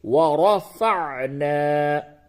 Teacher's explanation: تو یہاں پہ چونکہ را کے اوپر زبر ہے، اس را کو پڑ کر کے یعنی موٹی آواز میں پڑھیں گے. وَرَفَعْنَا.